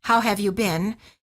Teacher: In American English, the word been, as in how have you been, is pronounced as I, but in British English it sounds like E, the same as the food beans.